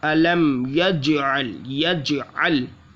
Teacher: चूँकि कलकला है तो जीम में जीम साकिन है तो कलकला खूब ज़ाहिर होगा